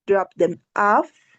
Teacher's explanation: the rising intonation is at the end